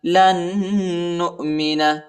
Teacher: لام کو نون کے ساتھ ملائیں گے اور غنہ کریں گے